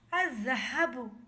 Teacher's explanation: اس کی ہجے ہوگی حمزہ زا زبر از، زا زبر زا، الزا، ہا زبر ہا، الزح، با پیش بو، الذھب۔ لام نہیں پڑھا جائے گا، الف کو زال سے ملائیں گے